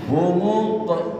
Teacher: Jadi harus kolkolah, baca kolkolah, jangan tidak dibaca kolkolah, dipantulkan.